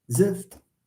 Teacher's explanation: There is an analysis that says in zift you have a shva, an epenthetic shva between z and f. Zift, making z as an onset, and then you have this underlying shva, and then f, and then t.